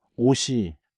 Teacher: When a vowel follows the batchim, the consonant wakes up and slides forward into that next syllable. >> So ot with the subject particle i becomes osi and you hear siot again